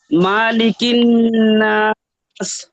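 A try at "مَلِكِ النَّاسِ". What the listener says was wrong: মালিকের মা টান হবে না?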